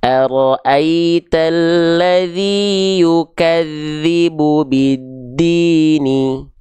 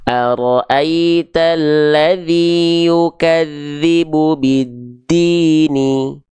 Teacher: mad tabi'i itu dilafalkan dengan kadar 2 kali ayun. 2 harokat itu jadi dia dibaca lebih panjang 2 hitungan atau 2 ketukan